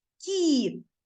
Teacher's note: Ми не говоримо кит твердо А ми вимовляємо м'яко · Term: М'який приголосний